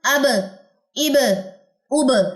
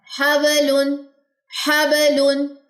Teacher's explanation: جزم کے ساتھ ایگزیکٹ مخرج ملتا ہے کہ یہ ہونٹوں کے تری والے حصے سے ہی ادا ہو رہا ہے